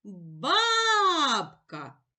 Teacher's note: наголос падає на перший склад баб наголошений голосний